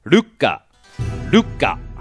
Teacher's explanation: the lu gets cut a bit short and we jump quickly to the ka